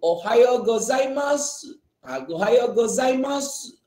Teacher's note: U ni dia ada bunyi tapi sikit je.